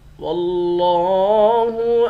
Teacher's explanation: واو کو لفظ اللہ کے لام کے ساتھ ملا کر لفظ اللہ کے لام کو موٹا پڑھیں گے۔ لفظ اللہ کے لام کے اوپر کھڑا زبر ہے، کھڑا زبر کو ایک الف کے مقدار کھینچ کر پڑھیں گے۔